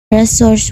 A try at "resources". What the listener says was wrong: The learner omitted the sound s in the word resources, and then she inserted the word is between which and exist.